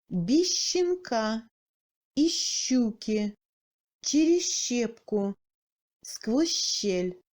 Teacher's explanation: La combinaison Z-Ща se rapproche au Щ mou long.